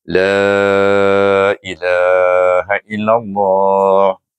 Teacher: bacaannya apa yang ditetapkan oleh ahli tajwid mesti dibaca enam harakat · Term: mad takzim